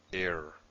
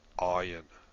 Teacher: There's this initial stoppage of breath, air. And Ayin is a little bit deeper in the throat, Ayin. Again, I can't maintain that distinction. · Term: Aleph